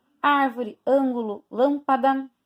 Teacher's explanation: aqui todas elas são acentuadas todas elas né árvore ângulo lâmpada são proparoxítonas porque tem a antepenúltima sílaba mais forte